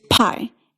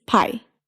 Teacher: For both of these consonants, the difference between English and Japanese is all about that puff of air